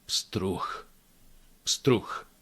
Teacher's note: the last sound is actually ch in this case, because it becomes unvoiced at the end of the word